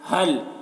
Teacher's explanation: اس ہا کی آواز بھاری ہوتی ہے اور بغیر ہوا کے اس کی آواز نکلتی ہے